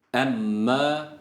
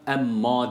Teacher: şeddeli Mimi uzatırken a sesi vermiyoruz